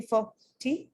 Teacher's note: you are allowed to reduce it put a schwa over there and make it sound fur